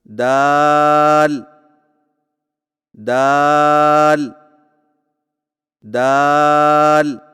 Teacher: دال کی ادائیگی میں زبان کی نوک کو سامنے والے اوپر کے دو دانتوں کی جڑ سے لگا کر باریک آواز میں پڑھیں